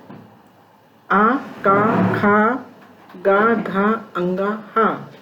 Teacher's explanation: अकुह विसर्जनीयानाम कंठः। अकुह आ, का, खा, गा, घा, अंगा, हा तथा विसर्ग का उच्चारण स्थान कंठ है